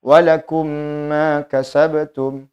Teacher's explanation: Kalau mim dan nun di sini ditahan atau dipanjangkan 2 harokat, karena mim dan nun dipengaruhi dengan sifat dengung pada huruf nun dan mim tersebut. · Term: idgham kamil